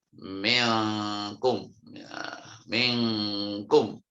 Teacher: Jadi suara engnya itu sangat kuat, bacanya minkum. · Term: ikhfa ab'ad